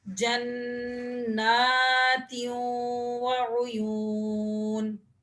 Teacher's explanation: تنوین کو واو کے ساتھ ملا کر غنے کے ساتھ پڑھیں گے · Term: غنہ